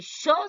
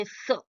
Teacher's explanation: People generally do not say sh, they'll say s.